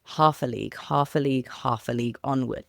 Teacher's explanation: And I emphasize the words that way because Tennyson has written this poem in a very specific meter, and that meter is dactylic dimeter, where the first syllable is stressed and the following 2 are unstressed. Now, what this does is create a sonic feeling very similar to that of a horse galloping.